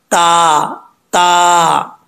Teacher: तफक काहून, ता बरीक पढ़ा जाएगा, दो नुकतों वाला ता है, इसका मखराज है ज़ुबान की नोक ऊपर वाले दांतों की जड़ों से लगे तो ता पढ़ा जाता है बरीक